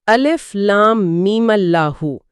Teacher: میم کی آواز میم سے میمہ بن گئی اور ایک روانی کے ساتھ اس میں جلالت سے جڑ گئی